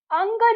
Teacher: अंग नहीं बोलना, ग का उच्चारण मत करना, अंग, ठीक है? नाक में हवा को छोड़ना है, बस ग मत बोल देना। तो ये होता है अंग, आ से ध्वनि शुरू होती है और नाक में जाती है।